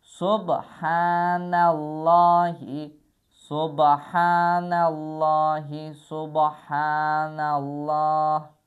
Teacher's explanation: Hə, həm boğazlı, həm də uzanır.